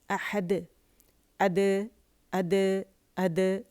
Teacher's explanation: اچھا، اور جب احدن پہ ہم وقف کرتے ہیں تو یہاں پہ ہمارے پاس قلقلہ جو ہے وہ دال کا ہوتا ہے، تو جب ہم اسے قلقلہ کرتے ہیں تو بہت واضح ہونا چاہیے